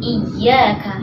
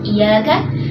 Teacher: Dan di sini ada ya tasydid ya, ya-nya ditekan ya, suaranya ditinggikan.